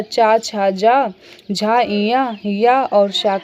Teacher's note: च, छ, ज झ, ञ, य और श का उच्चारण स्थान क्या है? तालु है।